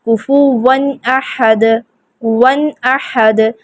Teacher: ہم یہاں پہ ون غنہ کی صفت ایڈ نہیں کریں گے، ہم اس میں غنہ شامل نہیں کریں گے، ہم نون یہاں پہ تنوین کی آواز کو مکمل طور پر ظاہر کرتے ہوئے پڑھیں گے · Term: اظہار